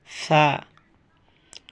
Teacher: সা নরম হবে, জিহ্বার আগা ওপরের দাঁতের আগার সঙ্গে।